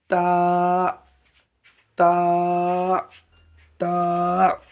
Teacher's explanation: তা উচ্চারণ করতে গেলে জিভের ডগা এবং উপরের দাঁতের তালুতে লাগবে।